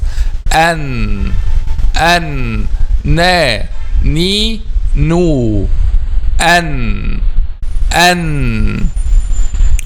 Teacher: the tip of the tongue, when we pronounce letter Noon, touches the gums of front 2 upper incisors